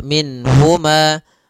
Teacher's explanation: Nun di sini harus jelas karena bertemu dengan huruf ha, maka tidak boleh ditahan.